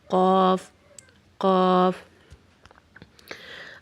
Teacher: غین ہمارے گلے کے اوپر والے حصے سے ادا ہوگا جہاں سے ہم نے خا کو بھی ادا کیا ہے، اور قاف ہمارے زبان کی جڑ کو اور اوپر والے تالو کو آپس میں ملانے سے ادا ہوگا